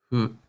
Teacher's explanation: The consonant is sort of between an F and an H.